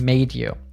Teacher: We have some fantastic sound morphing with made you. When we encounter a D and Y together, they often become a J